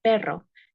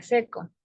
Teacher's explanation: en la palabra perro, la e suena más abierta que en la palabra seco